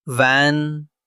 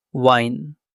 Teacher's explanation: For V, your top teeth touch your bottom lip. For W, your lips round, like you're about to whistle.